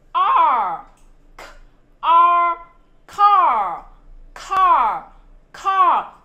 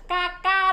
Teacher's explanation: Con phát âm giống âm A của tiếng Việt nhưng con cong lưỡi lên.